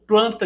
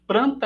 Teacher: ao invés de realizar o l realiza o re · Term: rotacismo